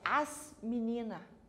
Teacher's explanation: E compreendemos também que quando nós estamos na oralidade, que nós não marcamos às vezes o R, nós não marcamos o S nas palavras muitas vezes, principalmente nós aqui no Paraná, né? Nós temos um hábito de marcar o S do plural no artigo e não marcamos no substantivo.